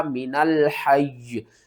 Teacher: یا کے اوپر سختی کر کے وقف کرنا ہے